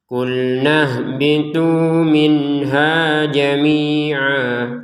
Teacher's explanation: Karena berhenti. Jamian dibacanya jamia panjang dua harakat. Karena kita berhenti.